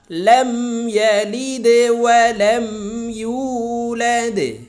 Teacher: সম্মানিত দর্শক শ্রোতা আমরা এই দালকে ধাক্কা দিয়ে উচ্চারণ করব দাল কলকলার হরফ